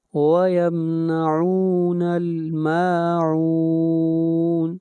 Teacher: ما کے اوپر مد اصلی ہے، اس کو ایک الف کے برابر کھینچ کر پڑھیں گے